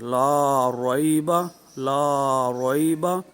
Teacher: حروف لین کو بغیر کھینچے بغیر جھٹکا دیے نرمی سے معروف پڑھتے ہیں۔ تو نرمی سے پڑھیں گے، معروف پڑھیں گے، لیکن درازگی اس میں نہیں ہوگی، ٹھیک ہے۔